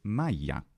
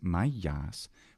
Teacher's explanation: genitive singular Mayas we know that Alpha must be long because that vowel is always lengthened in the genitive singular of first declension nouns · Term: Long Alpha